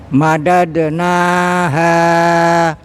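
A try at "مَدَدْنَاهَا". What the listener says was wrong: Oke, coba pendekin dikit Pak. Dipendekin dikit. Madadnaha. Masih kepanjangan Pak. ya kepanjangan Pak. Madadnaha.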